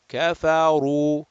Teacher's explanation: Ra with the dhamma is going to be mufakham, rounded, heavy, full mouth. Kafaru, raise the back of the tongue.